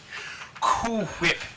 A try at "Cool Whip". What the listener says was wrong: It would just be Coo. Coo. No British whip.